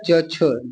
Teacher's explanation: छ का उच्चारण स्थान तालू है सही है छ महाप्राण है